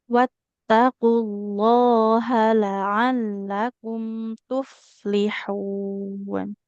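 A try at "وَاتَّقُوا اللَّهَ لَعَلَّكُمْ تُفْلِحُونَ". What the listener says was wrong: Oke, di haknya nggak boleh panjang ya dia. Wattaqullaha. wattaqullaha la'allakum tuflihun. panjang pendeknya sama-sama Ibu hati-hati ya. Tadi ada beberapa yang keliru. Nah, kemudian selain panjang pendek, tanda tasydidnya juga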